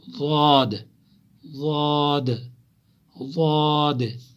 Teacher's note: زواحق، تواحن، نواجز، جو دانت زواحق، تواحن، نواجز، انہیں کو ڈھاڑے کہتے ہیں، یمن زن اس کاشر پٹ اڑمچ ونن، تو یہی اوپر والے ان کے ساتھ ٹچ ہوتا ہے، زبان کی کروٹ ان کے ساتھ ملتی ہیں ڈاڑوں کے ساتھ، تو وہاں سے ضاد نکلتا ہے